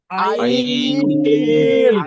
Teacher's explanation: হা বলেন >> এই যে আইন আমরা এখন আইন উচ্চারণ করব এই আইনটাও শক্তি দিয়ে উচ্চারণ করতে হবে আইনটাও গলার মাঝখান থেকে